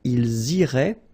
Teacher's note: Okay, so remember, make the liaison as well. You get this S and then the vowel after.